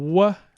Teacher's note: there's a raising of the back of the tongue and there's also the rounding of the lips